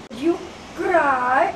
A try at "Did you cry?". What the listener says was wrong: Up. The voice must be up. Not like that. See, did you cry? Did you cry?